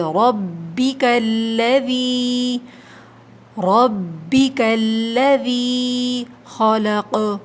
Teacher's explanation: را کے اوپر زبر ہے، موٹا پڑھیے